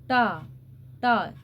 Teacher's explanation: टा ठ ड ढ, मूर्धन्य, जीभ का सबसे आगे वाला हिस्सा ऊपर जाके टच हो रहा। टा टा, जीभ कैसे मुड़ रही है, गोलाकार मुड़ रही है, तो यहाँ पर ये मूर्धन्य है।